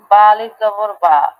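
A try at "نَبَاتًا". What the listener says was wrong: আচ্ছা, এখানে আপনি এই যে নাবাতান, বাতে টানলেন, কেন টানলেন? টানেন নাই? তাহলে তো না, এই যে পুরাটা পড়েন। হুম, হুম, হুম, একসাথে বলেন। নাবাতান। আপনার পড়ার মধ্যে একটু টান হচ্ছে।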